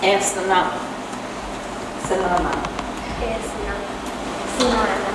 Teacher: You don't use an inflection to make a question. The word itself is a question.